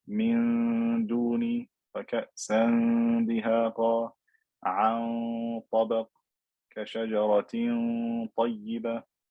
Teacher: I am pronouncing the noon without touching my tongue, the tip of my tongue to the top of my mouth.